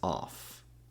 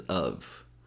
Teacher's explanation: the first one we pronounce as off with an a sound followed by an F sound and the second one we pronounce as of which is a schwa sound